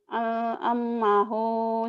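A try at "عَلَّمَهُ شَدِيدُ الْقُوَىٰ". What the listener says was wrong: Masukin ke L. Allamahu, gitu. Allamahu syadidul quwa.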